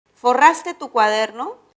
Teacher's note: la entonación final debe ser ascendente y la respuesta debe ser sí o no borraste tu cuaderno